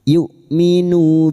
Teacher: Hamzah memiliki sifat jahr dan sidah. Tertahannya nafas dan suara.